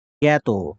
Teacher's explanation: জ্ঞাত, এই যে জয়ু এখানে কিছুটা গ ধ্বনিটা যদি সামনে মাঝখানে থাকে তাহলে ২ টা গ উচ্চারণ হবে। আর যদি ১ম এ থাকে তাহলে একটা গ উচ্চারণ হবে এবং কিছুটা নাসিক্য হবে